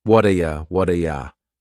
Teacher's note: That T at the end of the word what is going to change to a D sound. This is really typical of American English, where a T that's surrounded by vowel sounds is going to change to a D. It's called a flapped T, and it just rolls off your tongue in a smooth way.